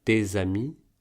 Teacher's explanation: on ne prononce pas le s de des quand il est pris tout seul (le s est donc muet), mais on le lie au a de amis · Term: liaison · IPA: [dezami]